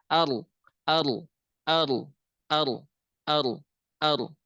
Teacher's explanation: Jadi tidak digetarkan, tapi langsung ditempelkan ke atas. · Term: ro